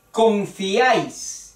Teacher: tres vocales forman o están formando una sola sílaba confiáis dos dos sílabas y ahí es una sola sílaba es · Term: triptongo